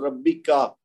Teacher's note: جب زبر ہو تو بس ایک حرکت دینی ہے، اس کو لمبا نہیں ہونے دینا